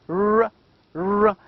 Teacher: formed with the tongue tip raised and curled back near the alveolar ridge